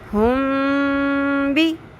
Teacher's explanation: اگر میم آ جائے، میم ساکن، اور آگے با آ جائے تو وہاں پہ اس کو لمبا کریں گے. ٹھیک ہے، وہاں پہ ہم اخفا کریں گے.